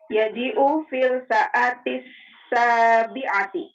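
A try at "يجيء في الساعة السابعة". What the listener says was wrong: Ahsan.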